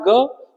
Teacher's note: ग क्या है? सघोष का अल्पप्राण है।